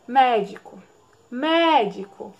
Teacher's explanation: né então vamos lá de trás para frente última penúltima antepenúltima a antepenúltima é mais forte então essa palavra é proparoxítona